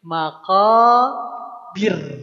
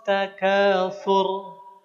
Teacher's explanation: Karena binya berharakat kasrah i. Maka ro yang sukunnya jadi tipis.